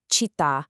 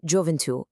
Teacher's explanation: Because the ends were abruptly truncated, the accent now rests heavily and permanently on that final vowel